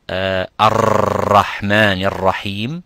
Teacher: vibrating twice and not 3 or 4 or 5 times to make insisting of that tashdid of the Ra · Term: Ra with a shadda